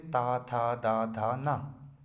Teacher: जीभ हमारे कहाँ पे लगती है आके, दांतों के पास, दांतों पर लगती है। इसीलिए हम ता था दा वाले को क्या बोलते हैं हम, दंत।